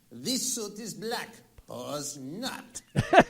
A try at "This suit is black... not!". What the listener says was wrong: Wait, you don't say pause. This suit is black. That's a pause. Not.